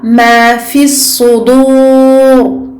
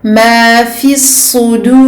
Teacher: Ici, je rends le dal aminci comme il doit être.